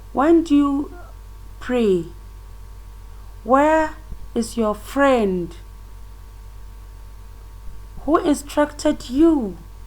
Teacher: In the WH question, that is where we use when, where, or who, the tone is also falling.